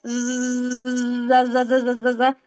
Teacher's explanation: जब जुबान की नोक से इतना तो पता है, जुबान की नोक नीचे के जो दांत है उसके किनारों से लगेंगी तो ज निकलता है